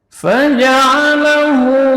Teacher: mad silah qasirah, berarti panjangnya 2 harakat.